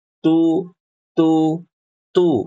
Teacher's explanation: Kalau baca huruf ta dommah bunyinya tu tu. Jangan dibaca to.